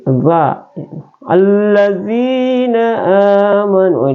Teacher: zal itu adalah tarful lisan atau berada di ujung lidah